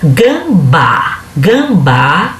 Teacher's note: se você olhar de trás para frente, a primeira sílaba de trás para frente vai ser a mais forte, que é o bá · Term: oxítona